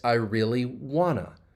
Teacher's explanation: the reduction want to wanna